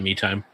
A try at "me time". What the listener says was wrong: pronounce your words better. You really sounded like mead time.